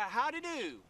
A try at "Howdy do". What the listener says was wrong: Don't say it like you're making fun of them. Say it like you mean it.